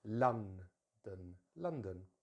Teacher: and the stress here, and as it is with almost all two-syllable words, the stress is normally at the beginning of the word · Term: stressed syllable